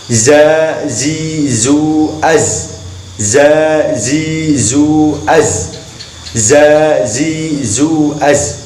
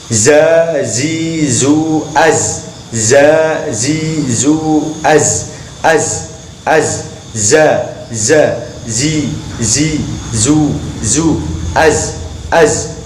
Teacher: Makhrajnya adalah ujung lidah di belakang ujung gigi depan atas dan bawah. Dan pengucapannya ada suara desisannya.